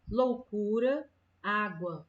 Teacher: tem duas vogais que se encontram na mesma palavra e elas estão na mesma sílaba, elas não vão se separar